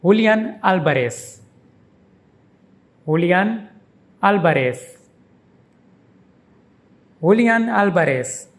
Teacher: V is pronounced like B. And the ending is like S, not Z.